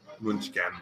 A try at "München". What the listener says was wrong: There's no ken in here. So, and that's pretty much how you say it.